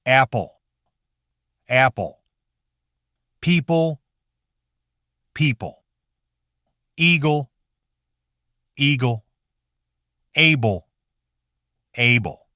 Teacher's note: the final L often sounds less sharply separate